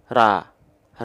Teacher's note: karena ini ro dibacanya bukan Ra tapi O berarti dia senyum enggak enggak perlu senyum buka mulut cukup buka mulut tanpa senyum